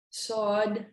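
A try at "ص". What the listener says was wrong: Yeah, make it a bit heavier. Sod.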